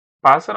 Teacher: a parte mais forte é o pás.